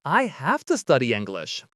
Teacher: Have to here again to changes to ah.